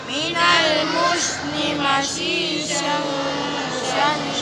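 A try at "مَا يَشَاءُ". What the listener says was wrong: Nggak boleh masyishang. Masyishay shanisha. Masyishay shanisha. Masyishay shanisha. Shanisha.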